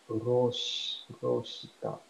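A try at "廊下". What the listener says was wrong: So this is a married word, so it does end with a ka here, as it's roka. Pretty sure long o.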